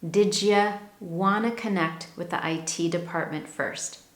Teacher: A D sound combined with a Y when a word ends in a D sound and is followed by a Y most often, the word you, the resulting combination is a Jew or J sound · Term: assimilation